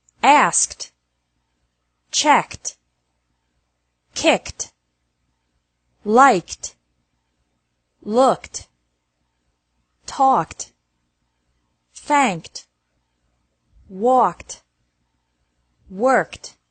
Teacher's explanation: ED is pronounced like T after verbs ending with a K sound.